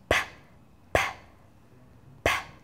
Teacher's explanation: Now there's only one difference in how both of these sounds are made, and that is to do with your voice box. So P, P, P is made by lips together and open, but your voice box is switched off. So if you feel on your throat, you shouldn't feel any vibrations there.